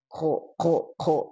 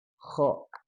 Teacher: harusnya ada keluar angin ya. Jadi dia hamas. · Harusnya dia rokhwah dan hamas